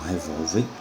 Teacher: você tem a sílaba tônica vol, que é a penúltima, e termina em R.